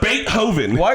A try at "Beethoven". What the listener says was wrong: Why are you throwing the extra H in there? Beethoven, right?